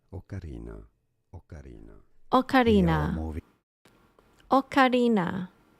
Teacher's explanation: his pronunciation's closer to an o than an ah